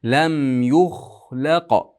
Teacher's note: La ingichka, qof yo'g'on. Qof ham qalqalasi ham qalqala kubro eng katta.